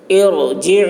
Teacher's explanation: النفس المطمئنہ ارجعی الی ربک راضیۃ مرضیہ، را پر ہوگی، ارجعی، عین حلق سے ادا کریں گے